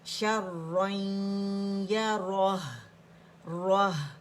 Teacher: ہا کو موٹا نہیں کریں گے, ہا باریک ہی رہے گا